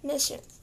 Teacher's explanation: the A in the word machine is pronounced as a very weak and distinct sound represented by an upside down E